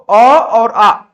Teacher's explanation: अ और आ ये दो ऐसे हैं जो कि आपके कंठ के द्वारा आप लोग का बोला जाता है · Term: कंठ ध्वनि